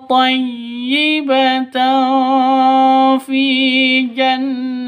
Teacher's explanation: tanwin bertemu dengan fa samar didengungkan siap-siap ke huruf fanya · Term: ikhfa hakiki